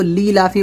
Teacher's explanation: اکثر لوگ اس کو لی لافی پڑھتے ہیں، حمزہ یا زیر ای اس کو کھا جاتے ہیں